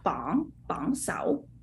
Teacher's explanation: It's a second tone, right? Bong, second tone going up, right? Okay. Second tone.